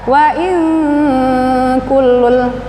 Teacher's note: samarnya hampir mengucapkan makhraj ka di pangkal lidah. Ini dengungnya atau samarnya tidak waing, bukan eng, waing ka, samar, hampir mengucapkan makhraj ka, namanya ikhfa ab'ad. · nun mati bertemu dengan kaf, ikhfa, dengung ditahan 3 harokat. Wa in kullul, ikhfa, samarnya hampir mengucapkan makhraj ka di pangkal lidah.